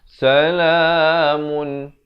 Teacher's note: bila bunyi mun sempurna jangan panjang